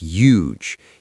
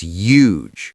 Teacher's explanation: I noticed something peculiar about the word huge. He seemed to omit the H entirely.